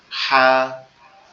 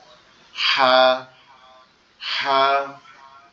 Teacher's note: একটু গলা আওয়াজ চেপে, ফ্যাসফেসি মতো আওয়াজ হবে